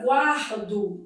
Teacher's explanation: Na palavra guardo dividido em sílaba, ó, eu tenho aqui um encontro consonantal imperfeito. O U é pronunciado, é uma semivogal e o A é vogal.